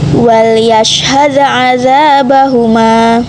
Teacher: Terdapat hukum kaidah bacaan qalqala sugro sebab huruf dal disukun